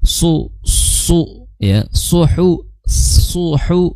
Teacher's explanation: makhraj shad di ujung lidah bertemu dengan gigi sari bawah kemudian disertai mencucu karena apa karena harakatnya dommah